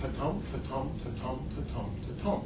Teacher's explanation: unstressed followed by stress syllable if you put five of them together that is a meter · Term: iambs